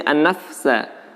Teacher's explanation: Wa nahan nafsa, ada fa yang bersukun. Nah, praktek pengucapan untuk fa yang bersukun itu seperti ketika sin yang bersukun. Ditahan sebentar baru dilanjutkan ke huruf berikutnya. Jangan langsung pindah ke huruf sin.